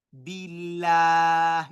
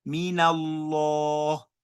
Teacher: It becomes la and not law. It becomes la when you have kasra before the word Allah. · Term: tarkik